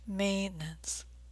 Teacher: Maintenance has a nice long A as in gray sound.